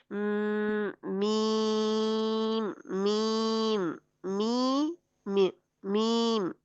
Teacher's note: मुंह में मीम में ऑटोमेटिकली गुन्ना पाया जाता है, यानी नाक में आवाज जाती है और वहां से बाहर आती है। क्यों? क्योंकि मुंह हमारा बंद है।